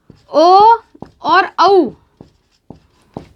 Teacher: ओ और औ, इनका उच्चारण स्थल होगा कंठ ओष्ठ। ये बनता है अ या आ के बाद में ऊ होगा, तो ये बनेगा ओ।